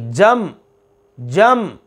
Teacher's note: फ़वसतना, फ़वसत, सत, तो साकिन। बिही जमअ, मीम, ये हरूफ क़लक़ला में से नहीं है, लिहाजा आवाज़ जम गई